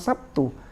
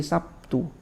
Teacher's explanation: karena terpengaruh dari T-nya, maka B-nya ini bisa seakan-akan berubah jadi P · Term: mumatsalah